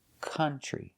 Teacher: So now we have OU, but it's not making the ow sound. It's making the sound like cup, cut, and up.